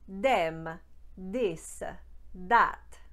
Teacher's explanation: what happens in those cases is the th will become d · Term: turning the TH sounds into plosives